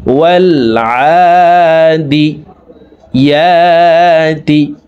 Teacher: ইয়ার উপরে খাড়া জবর আছে, এক আলিফ টানবো